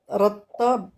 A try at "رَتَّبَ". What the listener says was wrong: C'est pas ta. رطا. رت. رت. رتب.